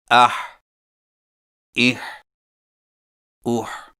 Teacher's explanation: حا حلق سے رگڑ کھاتی آواز ادائیگی کے وقت زبان کی جڑ کو حلق کی طرف مضبوطی سے دباتے ہوئے ادا کریں، مثلا اح، اح، اوح۔